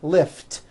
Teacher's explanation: the word lift lift ends with an unvoiced T